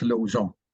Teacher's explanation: part of the sound comes out through your nose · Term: nasal vowel